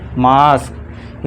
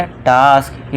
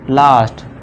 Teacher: A का उच्चारण आपको बड़े आ से, आम वाले आ से करना है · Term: बड़े आ की ध्वनि